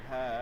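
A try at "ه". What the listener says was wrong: এখানে চাপানো লাগবে না, ঠিক আছে? চাপানোর দরকার নেই। এটা বাংলায় নর্মালি যে বলি না হ হা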